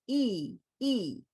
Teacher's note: it's the highest vowel